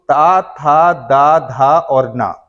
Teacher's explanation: जब भी इनका उच्चारण होता है तो हमारी जीभ जो है वह दांतों को स्पर्श करती है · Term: दंत व्य ध्वनियां